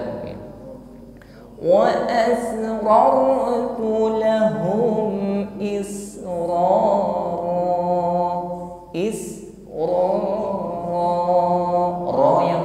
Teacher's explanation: kita ucapkan dengan taqrir tetap bergetar ada getarannya namun getarannya tebal